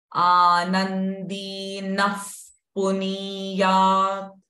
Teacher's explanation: the visarga here is followed by p sound. Hence, the visarga sound will become f.